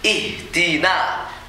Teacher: Yang pertama haknya harus dalam ih. Satu hentakan saja. Jangan sampai mulur-mulur ya.